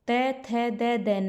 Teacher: बोलते टाइम हमारी जीभ दांतों को लगती है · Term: दंत्य व्यंजन